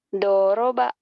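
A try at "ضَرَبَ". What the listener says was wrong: Nggak ada yang panjang. Doroba.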